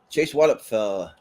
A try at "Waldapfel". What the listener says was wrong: The P is silent.